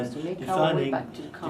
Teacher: notice was to, low tone, unstressed